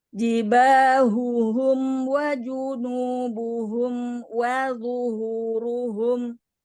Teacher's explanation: Lu tebal, hu tipis, ru tebal lagi, hu tipis lagi.